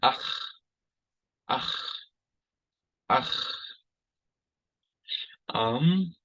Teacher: we call it the guttural, and it's pronounced in the back of the throat